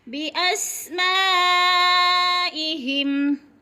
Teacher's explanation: اسما پہ مد ہو رہی ہے، مد متصل 5 حرکات کے برابر کھینچ کر پڑھنا ہے